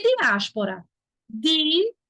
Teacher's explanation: Não tem o ditongo na última palavra. Tem um hiato. As. O I ficou distante do A.